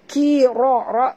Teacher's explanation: ra baca tebal ra bari atas